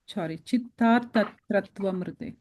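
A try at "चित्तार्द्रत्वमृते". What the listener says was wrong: Yeah, the ir sound, the r sound is coming in the da, not in the ta.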